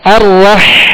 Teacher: ہا کو وسط حلق سے ادا کریں گے. الرح آواز محسوس کر رہے ہیں؟